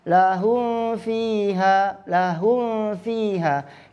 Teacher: kalau mim dua syafatain, dua bibir, kalau fa masih ada gigi yang menyentuh badan bibir.